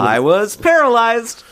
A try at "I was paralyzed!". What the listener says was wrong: No, it's up, more. Was You're at Disneyland. You're on the... Precipice of a roller coaster.